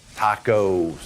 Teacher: We say O and we pull our lips together. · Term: that rounding